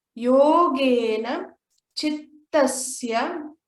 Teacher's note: Yo is long, Ge is long. Every time there's an Okara and Ekara, it will always be long.